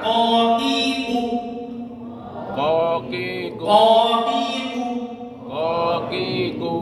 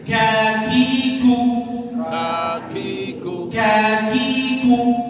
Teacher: Makanya huruf kaf ketika dhammah harus ku, nggak boleh ku. Kalau ku nggak ada anginnya jadi qaf. Itu yang bedakan. Kaf harus ada anginnya.